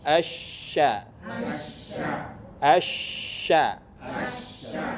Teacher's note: makharijul huruf syin Tengah lidah ke langit